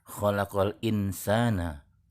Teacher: yang kita ketahui makhroj n adalah ujung lidah menyentuh langit-langit mulut nah pada saat ikhfa ujung lidah sudah tidak pada tempatnya lagi sudah bersiap di huruf sebelahnya